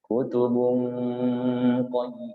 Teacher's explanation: Jadi harus dengungnya itu sudah siap mengucapkan huruf qaf. Makanya dia dengung nun itu seperti huruf ng ya.